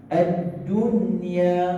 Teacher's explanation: Dia tidak boleh dengung dengan ad-dunya. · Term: izhar mutlak